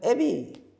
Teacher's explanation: 뒤에 있는 전설 모음이 앞에 있는 후설 모음을 변하라. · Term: 이 모음 역행동화